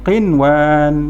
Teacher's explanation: walaupun bertemu dengan nun mati huruf waw, dia tidak ada dengung. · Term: izhar mutlak